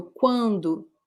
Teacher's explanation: it's a nasal vowel remember the sound is made here on our nose